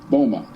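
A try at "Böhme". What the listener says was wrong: That's Jacob Burma. O. It's an O. No, it's an O with an umlaut. Burma.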